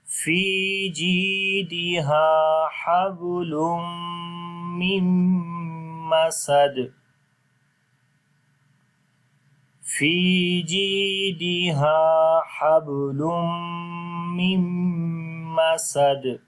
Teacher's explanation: as this first noon will be converted into meme due to grammar rule. On the last dal we make qalqala. Again it will be strong qalqala now.